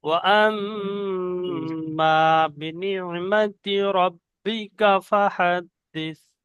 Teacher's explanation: রব্বিকা, কা বলে একটু টান হয়ে যাচ্ছে, টান হবে না